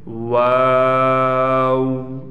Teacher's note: आपने दोनों होठों को गोल करना है और गोल करकर उसमें आपने थोड़ा सा मद करना है देखें वा दोनों होठों को गोल करने से वाव अदा होगा